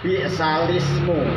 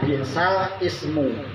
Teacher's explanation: jadi hamzah wasolnya itu tidak dibaca, dipindah ke lam. Bi'salismu, jadi tidak boleh dibaca bi'sal ismu.